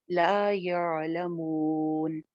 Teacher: मिन हाइसु ला यअलमून, ला एक अलिफ लंबा, या नरमी के साथ आइन के लिए जुबान को पीछे भेजना है हलक में। ला यअलमून, मून पे हम मद्दे आरिज़ लगा रहे हैं, तो 2 से 3 अलिफ इसको लंबा कर सकते हैं